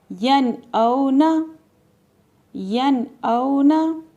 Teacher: ہم نے یہاں پہ غنہ نہیں کرنا، یعنی کہ ناک پہ آواز نہیں لے کر جائیں گے بلکہ نون کو ظاہر کر کے پڑھیں گے اور جلدی سے پڑھیں گے: ین او نا، ین او نا۔ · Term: اظہار